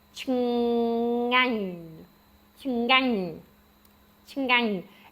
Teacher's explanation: the first one is ch, and then you have a ng, the ng sound, and then ah, and then ny, like onion